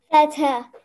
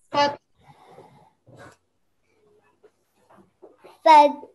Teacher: when you're pausing, rather than saying fathu, you're going to say fath. You're joining the two letters together. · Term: ha sakin